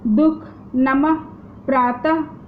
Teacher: इनका उच्चारण ह को हल्का सा झटका देकर किया जाता है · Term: विसर्ग